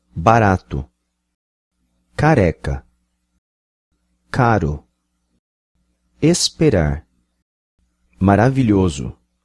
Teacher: So in this variety of Brazilian Portuguese, it's tapped, it's flapped. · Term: intervocalic R's